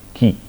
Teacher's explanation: ki means there is a vowel e is present and the unvoiced stop consonant k is there